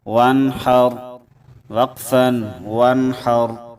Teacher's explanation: ہم نے نون ساکن پر غنہ نہیں کیا، کیونکہ اس کے آگے ہا حروف حلقی میں سے آ رہا ہے، تو اس لیے ہم نے نون ساکن پر غنہ نہیں کیا.